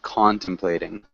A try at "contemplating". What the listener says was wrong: contemplating good